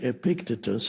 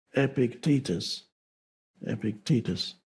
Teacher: Epictitus I used to say Epictitus and then I realized that stress the stress is on the second syllable